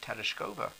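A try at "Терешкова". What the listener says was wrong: I think you meant to put the accent on the third syllable.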